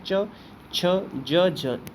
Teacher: चा वर्ग स्पेशली स्पर्श संघर्षी